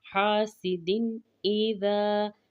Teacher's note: ذا کو کھینچ کر پڑھیں گے، الف مد کا قاعدہ ہے